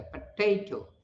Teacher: पोटैटो is stressed on the second syllable, जैसे पोटैटो, पोटैटो 3 syllable है इसमें, पोटैटो second syllable पर stress है